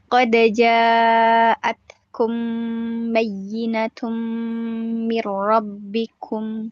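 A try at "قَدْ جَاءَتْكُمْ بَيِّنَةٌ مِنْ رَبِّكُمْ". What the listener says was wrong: Oke, ini juga sama masih dihentak-hentak ya. Qad ja'atkum bayyinatum dihentak-hentak masih ya. Oke, nanti bacanya lebih lembut lagi Kak. Jangan dihentak-hentak. Jangan dihentak-hentak pada tasdid ya, pada naber. Kemudian pada sukun ya.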